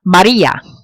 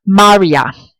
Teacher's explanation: Without the accent mark, the name would be pronounced like Maria. In effect, the accent mark turns the I into a strong vowel sound.